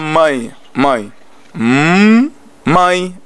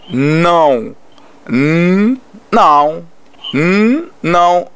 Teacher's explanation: Nessas três línguas, três som, sai da mesma maneira, porque sai do fundo da garganta, né? Passar para o nariz também